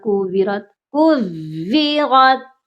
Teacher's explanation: اس واؤ کو بھی مضبوطی سے پڑھنا ہے، واؤ مدہ نہیں بنانا